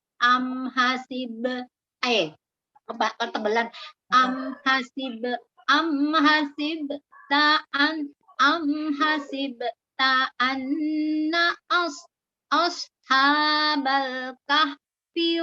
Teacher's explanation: Am hasibta anna so-nya ditebalkan lagi huruf istilahnya. A-nya tipis, huruf hamzahnya tipis, tapi so-nya tebal. A-nya biasa dulu hamzahnya.